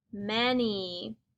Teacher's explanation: M makes the sound. The A makes an almost E-like sound. It says eh. The N says n.